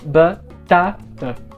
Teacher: o primeiro A, que está na primeira sílaba, que não é a mais forte, é pronunciado meio fechado ou mais central